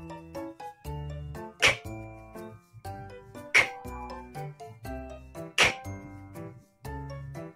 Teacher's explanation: đây là một âm vô thanh và âm bật hơi. Các em hãy bật hơi mạnh lên nhé.